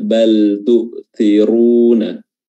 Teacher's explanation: Baik. Dan huruf ra-nya di sini tebal ya, jangan sampai dia terpengaruh dengan kasrah huruf sebelumnya. Bal tu'thiruna, tapi dia tebal.